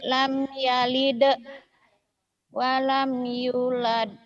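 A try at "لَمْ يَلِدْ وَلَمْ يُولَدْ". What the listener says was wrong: Yunya panjang tuh.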